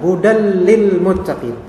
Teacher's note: Di sini ada tanwin ketemu dengan lam. Tanwin ketemu dengan lam, jadinya diidghamkan ke lam. Maka meleburlah dia ke lam.